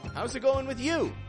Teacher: Notice again how we're raising the tone on you.